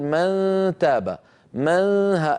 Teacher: من هذه الأسهم الكبيرة التي ترونها تظهر من الوترين الصوتيين وتمر عبر الخيشوم إلى أن تخرج من فتحتي الأنف، هي كناية عن صوت الغنة. من إذن لساني قريب من مخرج الدال، قريب من مخرج التاء، وفي صوت من الخيشوم، غنة كاملة الطول · يصاحب صوت الغنة صويت من الفم بسبب عدم انغلاق مخرج النون. مخرج النون ما عاد استعملناه، نحن الآن انتقلنا لمخرج قرب الدال، قرب التاء اللي هو الجزء اللساني.